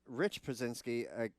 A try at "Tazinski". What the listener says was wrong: I got to correct you on that name because I raced with Taz, the father. And, they're Polish. He says the P is silent, so it's Tazinski.